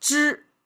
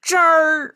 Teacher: But if they add a at the end, that means not only you pronounce zhi, but you have to curl the tongue at the very end. It become zher instead of zhi, it become zher. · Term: curled tongue habit